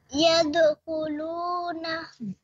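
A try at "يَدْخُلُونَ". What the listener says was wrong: शाबाश, आगे।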